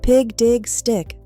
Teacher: There is our short I sound. It is a very thin, high sound.